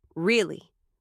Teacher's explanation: Really with falling tone means disappointment.